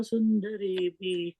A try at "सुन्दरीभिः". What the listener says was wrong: The third line, the last word, Sundari Bihi. There's a visarga there, okay?